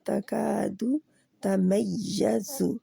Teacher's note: تکاد کا کو دو حرکات کے برابر کھینچنا ہے · یا کے اوپر نبر ہو رہا ہے، سختی سے ہٹ کرنا ہے